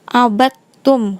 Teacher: dua harakat nah yang terakhir yaitu abad Tum hukumnya idgham mutajanisain karena huruf dan sukun bertemu dengan huruf ta cara membacanya dengan memasukkan huruf pertama ke huruf kedua